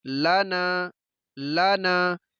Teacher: صرف نون کو ہی لمبا کرنا ہے، لام کو نہیں کریں گے. لانا، لانا یہ غلط ہے.